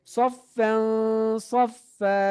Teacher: তানবিনের পর একফার হরফ সদ এসেছে, এই জন্য নাকের বাসিতে নিতে হবে। দুই জবরে থামলে এক জবর বাদ দিয়ে এক আলিফ টেনে পড়তে হবে।